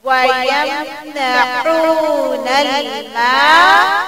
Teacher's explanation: میم کو پتلا اور الف کے ساتھ تھوڑا لمبا کریں